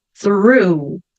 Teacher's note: eu ponho a língua atrás dos dentes de cima, puxo o R enrolado. Through. E depois um som de U.